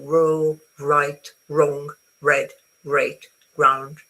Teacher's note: the English R is is a very smooth sound. It's not rolled. So you don't roll it is um raw in you your tongue goes back towards your pallet and and you go row right wrong red ground.